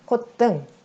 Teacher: 시옷이 디귿이 되고, 그리고 뒤에 디귿은 쌍디귿이 되는 콧등, 이렇게 발음이 된다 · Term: 사이시옷 현상